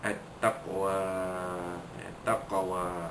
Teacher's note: huruf qaf mati pada tengah kalimah, maka ada hukum di sana, iaitu qalqalah surah. Dilantunkan bunyi qaf itu kecil sahaja, tidak kuat.